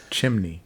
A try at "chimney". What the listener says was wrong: you add in an extra syllable. Chimney.